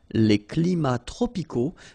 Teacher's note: we don't pronounce the S, and then we don't pronounce the T either.